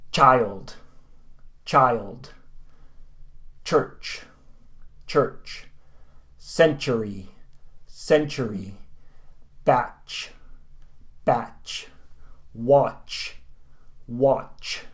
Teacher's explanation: Basically your tongue is making that 't...'t' sound, so your tongue is touching the roof of your mouth. At the same time, your mouth is making the 'sh' sound. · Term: 'cha' unvoiced sound